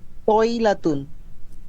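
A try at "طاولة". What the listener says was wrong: উইলাতুন, উইলাতুন। ওয়াও হবে। আমরা আমরা বলি না বিতির নামাজ, আসলে বিতির না, শব্দটা হচ্ছে উইতর। উইতর, ওয়াও, উইতর। হ্যাঁ, তো হচ্ছে উইলাতুন, একটি টেবিল। উইলাতুন।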